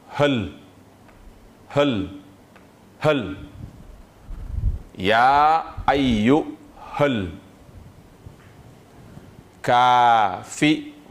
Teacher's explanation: C'est pourquoi ici, on a mis donc la flèche du he, on saute le alif qui tire, on saute encore le alif de liaison, c'est-à-dire le alif al-wasl, pour venir lire directement le lam qui porte un soukoun. Donc, hal, hal, hal, ya ayyuhal kafiruna.